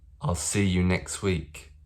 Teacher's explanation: in that sentence i didn't pronounce the t in next